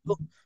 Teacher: bila sebut ta yang tipis yang baris depan tu baru dah muncung sikit